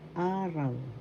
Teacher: So first syllable a, second syllable raw. The first syllable has the accent araw. That means day.